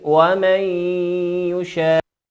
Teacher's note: وقول ربنا سبحانه وتعالى يشاء، النون ومن هي خالية من الحركة وهي نون ساكنة، وأتى بعدها حرف الياء، والياء من حروف الإدغام بغنة، يغن بمقدار حركتين